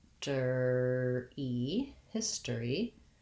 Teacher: that o r becomes more of just an er sound